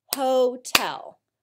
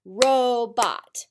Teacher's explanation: notice the long o comes at the end of the first syllable